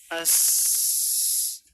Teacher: Di sini sin benar-benar ringan. Nafasnya mengalir bersamaan dengan rokhawahnya. As. Biasanya hamas ini ketika terjadi kesalahan padanya akan berkaitan dengan kesalahan makhraj, berpindah ke arah punggung lidah.